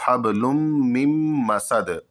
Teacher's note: یہ میم اگلے میم مسد والے میم میں جا کر کے مل جائے گا · یہاں پر نون کو نہیں پڑھا جائے گا، نون کو یہاں پر ادا نہیں کیا جائے گا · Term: غنہ